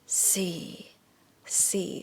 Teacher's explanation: low tone is you go low and go even lower yeah c c so sounds a little bit depressing c l